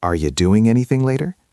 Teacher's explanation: The G at the end of anything and doing often gets cut or becomes soft.